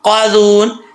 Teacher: یوں قاذون، آگے واو مدہ ہے، واو ساکن سے پہلے پیش ہے تو اس کو ایک الف کی مقدار لمبا کریں گے. یہاں پہ وقف ہو رہا ہے مد عارض وقفی کی صورت میں، اگر 2 یا 2.5 الف کرنا چاہتے ہیں تو آپ کی مرضی ہے.